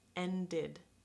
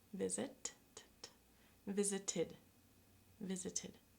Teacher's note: The first category we're going to look at is words where the ED ending is pronounced id. So this means it's an extra syllable, a syllable on its own. These words are the words in which the sound before the ED ending is a T or a D sound. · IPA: /id/